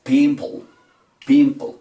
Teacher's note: Recuerden que esta E al final no suena y en la mitad de las dos consonantes que nos quedan, en este caso la P y la L, hacemos de cuenta que hay una O pequeñita. Decimos pimple, pimple.